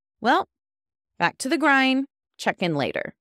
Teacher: Each sentence going down with my voice is telling Mark that I'm stopping my side of the conversation.